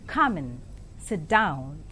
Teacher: falling tone is used in this utterance it becomes an instruction or a command